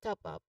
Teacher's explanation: when pronouncing top up, you give equal stress to both words. Top has a short O sound like in hot and a clear P sound like in up.